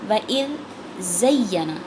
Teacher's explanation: پہلے دال باریک ہے، دونوں دانتوں کے درمیان زبان کو لا کے ادا کرنا ہے، اور دوسرا زا سخت ہے، اس میں سیٹی کی آواز آئے گی